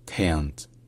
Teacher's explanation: Alors déjà, quand même, un point commun à ces deux formes, c'est que le K au début, c'est un K qui est aspiré. C'est-à-dire qu'on le prononce de manière à vraiment expulser l'air de la bouche, comme pour faire un H